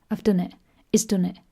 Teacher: have and has are very unstressed